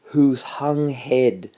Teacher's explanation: the H sound is quite a weak sound. It's not a strong consonant sound. It's quite a weak, breathy sound